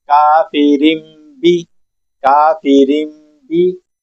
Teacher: मी बादी नून की आवाज बिल्कुल नहीं आएगी। नून साइलेंट होगा और यहां पर मीम की आवाज पैदा होगी। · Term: इकलाब